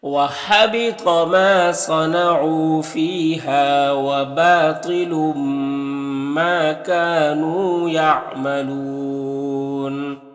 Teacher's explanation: میں واو مدہ تینوں کو ایک الف کے برابر کھینچیں گے یعملون یہاں پر وقف کی صورت میں مد عارض وقفی ہوگا